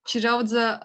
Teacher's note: it represents a voiceless palatal-alveolar affricate in the onset and a voiced alveolar affricate in the final syllable